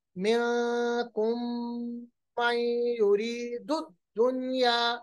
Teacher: मीम साकिन के बाद मीम आ रहा है, यहाँ पर इदगाम होगा